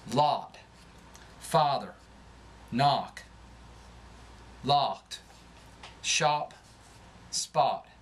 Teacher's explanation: Ah, as in lot and father, leans toward awe. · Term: southern drawl